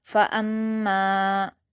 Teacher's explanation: فا پر حرکت جلد پڑھیں گے، حمزہ پر حرکت جلد پڑھیں گے، میم پر تشدید ہے تو حمزہ کو میم سے ملا کر سختی کے ساتھ پڑھیں گے اور میم مشدد کو غنہ کے ساتھ بھی پڑھا جائے گا، اور یہاں پر میم پر الف مدہ ہے تو اسے 2 حرکات کھینچ کر پڑھیں گے، فَأَمَّا۔